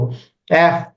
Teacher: তখন খেয়াল করেন আমার বাতাস দাঁতের ফাঁক দিয়ে হচ্ছে